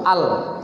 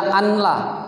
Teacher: Masuk bunyi nun ini ke lam dengan tidak dengung. Bila gunnah itu dengan tidak dengung, maka tidak ada lagi bunyi ini, langsung al. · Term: idgham bila gunnah